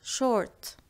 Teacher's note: For shorts, we say short, short with a rolled R